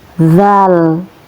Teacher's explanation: ujung lidah yang menyentuh gigi atas, antara gigi atas dan ujung lidah